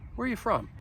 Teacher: the you, I'm pronouncing it more with a schwa sound